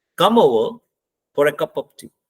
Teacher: कप हमारा noun है, इस पे स्ट्रेस लगा दिया।